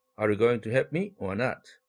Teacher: 상승 억양을 사용하는 경우 두 번째 선택 의문문의 or 앞에서